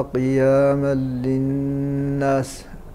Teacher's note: التنوين وقع بعده حرف اللام فحكم راينا مثله في الحكم قلنا هو الادغام التام